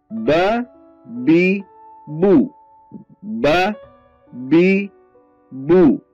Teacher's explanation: tempat keluarnya huruf ba, yaitu pertemuan bibir bawah dan bibir atas. Pertemuan bibir bawah dengan bibir atas, maka keluarlah bunyi huruf ba.